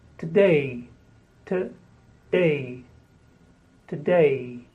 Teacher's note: Today. Today. Today. Stress on the day.